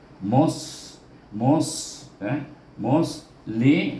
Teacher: Huruf sad terangkat, kita punya pangkal lidah menyebut sad